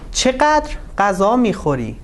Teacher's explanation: If we want to read this example like a question, you should put the stress on چقدر.